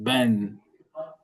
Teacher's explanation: Massa, massa qui signifie la table. Il y a né, comme le N français, mais rarement nasalisé